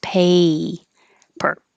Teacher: paper is a as in hey there paper so your tongue has to rise